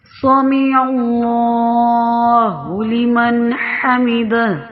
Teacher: سمیع یہ ماضی، سمیع ماضی کا صیغہ ہے، اللہ موٹا پڑا جائے گا، لمن باریک لمن، اور نون ساکن کے بعد حروف حلقیہ میں سے حا آ گیا ہے تو اس کو بھی اظہار کر کے پڑھیں